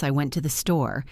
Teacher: we usually stress the word store